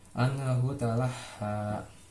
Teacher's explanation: Anhu masuk ke hukum bacaan izhar halki, jadi karena huruf sukun bertemu dengan huruf hamzah, jadi dibacanya jelas tanpa ada dengung.